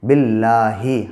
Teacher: اللہ کے لام سے پہلے جب زیر ہو تو اللہ کا لام باریک پڑھا جاتا ہے · جب زیر ہو تو اللہ کا لام باریک پڑھا جاتا ہے کھڑا زبر قائم مقام الف مدہ کے ہوتا ہے اس لیے اس کو ایک الف کے برابر کھینچ کے پڑھیں گے